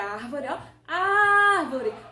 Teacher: a sílaba antepenúltima aqui é a sílaba mais forte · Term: proparoxítona